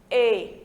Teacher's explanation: o E, em língua espanhola, ele é diferente do nosso E, daqui do Nordeste, que é mais aberto. A gente diz E, em espanhol, E, mais fechadinho, tá certo?